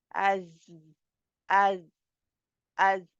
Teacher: इसका तलफ़्फ़ुज़ है उसमें दराज़ी पाई जाती है, यानी एक लंबाई-सी पाई जाती है ज़ाय में